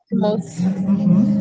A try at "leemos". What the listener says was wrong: Dá uma alongada quando tiver duas vezes.